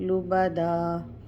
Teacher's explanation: یعنی تنوین میں جب ہم دو زبر کی تنوین پڑھیں گے تو الف ساتھ میں نہیں پڑھیں گے، جب اس پہ وقف کریں گے تو دو زبر جو ہے وہ دو زبر کے بجائے وقف میں ایک زبر پڑھیں گے، یہ الف تب پڑھی جائے گی، یعنی الف مدہ ہوگا یہاں پہ۔